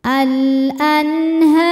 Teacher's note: Huruf ro dibaca secara tafkhim karena harakatnya di atas yaitu harakat dhammah. Cara bacanya ditebalkan.